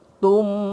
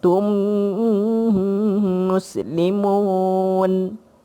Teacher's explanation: Mim empat mim idgham mislain, idgham mislain. Tutup mulut bagi rapat.